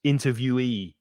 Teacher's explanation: So the e at the end is stressed, interviewee.